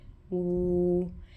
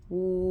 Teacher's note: I start with lips rounded, w, but I end with lips retracted and jaw down, w. I actually have to open up my mouth and change the length and size of my vocal tract to articulate the sound. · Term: glide